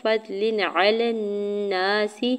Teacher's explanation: فضل علی الناس، فا کے زبر کو تو ساکن کے ساتھ ملاتے ہوئے پڑھیں گے، لام کے نیچے دو زیر کی تنوین پر اظہار حلقی ہوگا یعنی غنہ یا اخفا نہیں کریں گے۔ علی الناس، لام کی زبر کو نون مشدد کے ساتھ ملاتے ہوئے غنہ کرنا ہے، نون کے اوپر زبر ساتھ الف اٹیچ الف مدہ بھی ہوگا، سین کی زیر کو بغیر کھینچے ہوئے ادا کریں گے۔